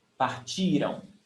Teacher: Stressed syllable before the last one. Partiram. And remember, it's before the last one, because if the stressed syllable is the last one, it's future.